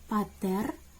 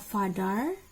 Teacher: P is a part of voiceless stops or voiceless plosives, and F is a part of voiceless fricatives